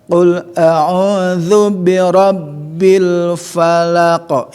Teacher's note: ingat ya bahwa zal itu mahrojnya 3 kan, sama sa, za dan zo, sama-sama digigit